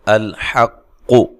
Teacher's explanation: قاف کو موٹا، حمزہ کو تحقیق کے ساتھ، لام کو ہلانا نہیں ہے